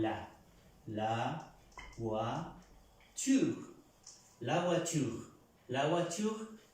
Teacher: Encontramos la OI, la pronunciamos UA, como en el español, voiture.